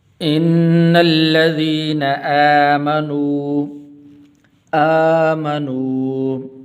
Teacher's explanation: یہ کھڑی زبر ہے تو اس کو ایک الف کے برابر لمبا کرتے ہیں۔